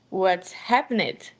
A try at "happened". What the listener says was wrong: Not happened. and again, it's not a T, it's a D. Happened. Happened.